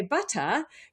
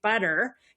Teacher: in British English, especially southern British English, you drop the R. But in American English, we kept the R.